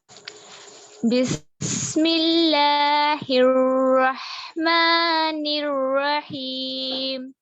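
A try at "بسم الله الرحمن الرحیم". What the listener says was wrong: ٹھیک ہے، دیکھیے بسم اللہ میں بسم اللہ لیٹا کر نہیں ادا کرنا کھڑا زبر کو، انفتاح للفم کے ساتھ. بسم اللہ.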